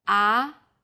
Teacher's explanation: the second tone starts with a middle pitch then Rises quickly